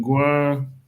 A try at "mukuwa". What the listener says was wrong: No, drop your nasal. No, drop your nasal.